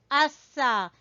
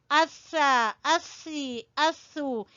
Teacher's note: सामने वाले 2 दांतों के सिरे से जब जबान की नोक लगेगी तो सा अदा होगा